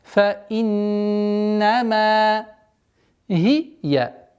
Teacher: Удержание назализации в размере двух огласовок, после которой идет мим с удлинением, естественным удлинением в размере двух огласовок фатха.